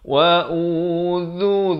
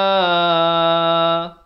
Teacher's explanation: Wa udhu, muncungkan. Wa udhu, dhu di hujung lidah 2 harakat